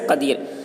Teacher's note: رائے ساکنہ سے پہلے یائے ساکنہ ہو، رائے ساکنہ سے پہلے یائے ساکنہ ہو تو رائے ساکنہ ہر حال میں باریک ہوگی، جیسے قدیر۔